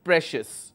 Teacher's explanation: Since I am supposed to focus on the second last syllable, so my stress will be on PRE